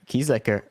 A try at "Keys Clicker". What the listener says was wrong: Keys Clicker. not Keys Liquor. You said Keys Liquor, yes.